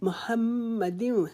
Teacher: آگے میم کے اوپر شد ہے، اس کے اوپر ہم ایک الف کے جتنا رکیں گے